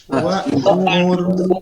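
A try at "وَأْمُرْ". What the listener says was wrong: Jadi ada tekanan. Jangan lemah ya, jangan lemah. Nah, itu huruf hamzah. Ini hamzah ini bukan merupakan huruf hidung, sehingga jangan diucapkan lewat hidung. Jangan i u ba.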